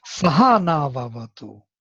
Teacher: So only saha has accent on the second syllable.